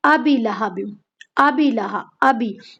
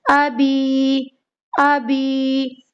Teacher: حمزہ کو نہیں کھینچ رہی، با کو بھی نہیں کھینچ رہی، با کے نیچے صرف اور صرف زیر پڑھ رہی ہیں، حالانکہ یہ کیا ہے؟ حروف مد ہے، یا ساکن سے پہلے زیر کی حرکت، تو اسے ہمیں کھینچنا ہے 1 الف کی مقدار کے برابر